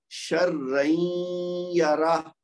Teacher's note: وہ تنوین یا نون ساکن کی آواز کو ہم شروع کریں گے اور ساتھ ہی اس کے اندر سے یا کی آواز شامل کر دیں گے, یعنی ملا دیں گے. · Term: ادغام